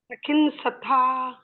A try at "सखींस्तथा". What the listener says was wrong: Very good.